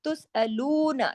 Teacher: وَلَا تُسْأَلُونَ، تس جماؤں کے ساتھ سین کو، تُسْأَلُونَ، لو کو 2 حرکات کھینچیں گے، باقیوں کو نہیں